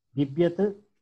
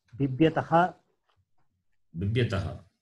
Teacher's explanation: When it comes two times, the first Bhakara, Mahaprana, will become Alpaprana. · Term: Alpaprana Bhakara